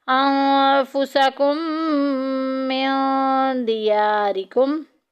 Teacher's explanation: میم ساکن کے بعد میم آ گیا، پہلی میم کو دوسری میم میں مدغم کر دیں گے ، ملا دیں گے، انفسکم من دیارکم، من دیا میں دیکھیں